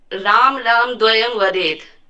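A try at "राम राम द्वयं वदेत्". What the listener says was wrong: हाँ, तो राम राम द्वयम बदेत, तो बोला नहीं, राम राम, देखा नहीं, म पे अंत में म पे जोड़ दिया, राम राम द्वयम वदेत। राम राम द्वयम वदेत, ठीक है।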